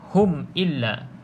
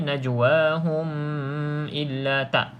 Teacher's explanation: baca tadi ni Min najwahum mim ini ada tanda mati betul jadi bila mim ada tanda mati bermaksud tidak boleh dengung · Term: izhar